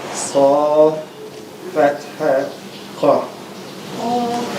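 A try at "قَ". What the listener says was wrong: Qa. I need to hear the click. Qa.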